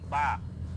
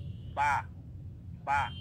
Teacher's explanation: এই বা হরফটা পড়ার সময় আপনি খেয়াল করেন আপনার দুই ঠোঁট কিন্তু একসাথে লাগলো, বা বা। তার মানে এই বা হরফটা পড়ার সময় বা হরফের উচ্চারণের স্থান হলো এই দুই ঠোঁট।